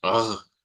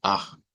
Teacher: esa X es la contraria a la R uvular, o sea, es igual que la R uvular, pero sin vibración. Si la R uvular es, "Ugh", esta es, ah, nada más.